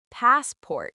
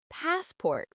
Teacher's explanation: it's actually passport with stress on the first syllable